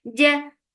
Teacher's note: The for kasra, give e sound, and dot is heavy. Ja, there is no flow of breath or sound in Jim. So Jim is very sharp sound when your middle part of your tongue is pasting up on your palate.